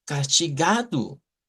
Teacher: en esa de castigado, en el ga, ahí está el acento, en la fuerza de voz